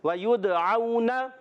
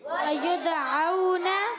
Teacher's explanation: واؤ ساکن سے پہلے زبر، واؤلین ہے، نرمی سے ادا کریں گے. نون پر حرکت ہے، کھینچنا نہیں.